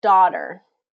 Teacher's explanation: Daughter has that ah pronunciation, even though there's two vowels there